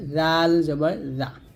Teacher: জাল যখন উচ্চারণ করবেন জিহ্বার আগা উপর দাঁতের আগায় লাগবে